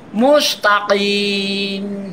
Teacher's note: Mustaqim qaf di tenggorokan.